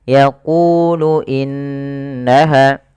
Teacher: hati-hati jangan dibaca yakulu. Jangan kita ganti dengan kaf.